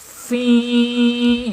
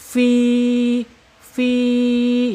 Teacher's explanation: aljaub ya keluarnya ee proses keluar fi ketika diucapkan ya karena di sini ada huruf mad aljaub yaitu rongga mulut saja ya dari tenggorokan itu langsung ke mulut tidak masuk ke hidung